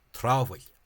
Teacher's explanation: is that AHA, the sound aha, became a long ah.